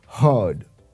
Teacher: when we pronounce the word heard the r is very slightly pronounced